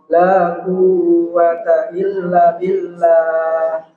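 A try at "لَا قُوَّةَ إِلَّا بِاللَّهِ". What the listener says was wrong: Waw bertasydid, tidak boleh ditempo. Ya, cukup ditasydidkan saja. La quwwata illa billah. Jadi agak ditekan. Quwwata.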